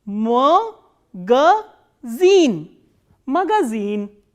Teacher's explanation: this e is stressed and rest of the vowels are unstressed. So, these two A will be pronounced as A.